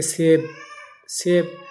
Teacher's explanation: سیب کی یا جو ہے یہ کھینچ کر نہیں پڑھی جاتی ہے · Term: یا مجہول